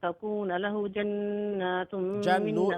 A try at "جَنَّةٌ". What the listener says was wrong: नून लंबा नहीं है